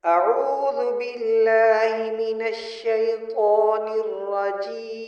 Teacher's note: عین کو حلق سے ادا کریں، طا کو بھرا ہوا پڑھیں اور ہر لفظ الگ الگ ادا کریں۔